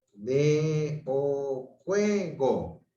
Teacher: Tiene mayor fuerza de voz en la penúltima sílaba, pero lleva tilde.